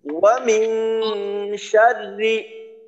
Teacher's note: এখানে তিনটা বিষয় বিশেষভাবে খেয়াল করব। ওয়াও এর উচ্চারণে যেন ঠোঁট গোল হয়, দ্বিতীয়ত মিং গুন্নাটা যেন সুন্দর মতো নাকে যায়, শেষে হলো র পাতলা।